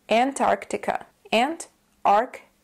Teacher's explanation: the first syllable which is an the second syllable is Arc keep in mind that for this word the stress is on the second syllable